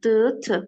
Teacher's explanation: d, t bir-birinin cingiltili kar qarşılığıdır. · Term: cütlük